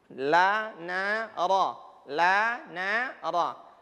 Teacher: La itu di ujungnya mendekati gigi. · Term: huruf lam